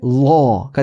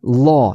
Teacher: 오 하면 입이 모이잖아요. 그러니까 입 모양은 오인데 안에 혀는 어예요. 그게 law가 됩니다. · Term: 오픈 O